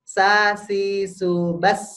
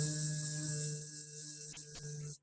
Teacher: Kita tekan lama-lama kepala kita nggak akan bergoncang. Karena yang kita keluarkan adalah angin bukan getaran.